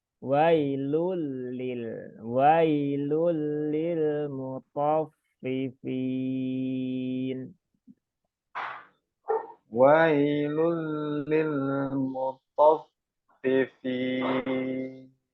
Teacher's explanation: Nah, lamnya bertasdid, Pak. Jangan wailulil.